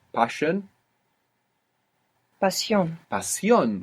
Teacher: you pronounced an S because we don't write sh